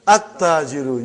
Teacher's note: You did not pronounce lam. Why you did not pronounce? Because it is sun letter.